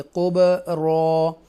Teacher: را کو بولڈ پڑھیں گے اور یہاں پر با کو کلکلے کے ساتھ پڑھیں گے. حروف کلکلہ ہے اس لیے قبرا.